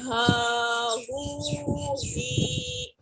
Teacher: ہا کو ہم چیسٹ والی سائڈ سے پڑھتے ہیں، تھروٹ کے لاسٹ والے پارٹ سے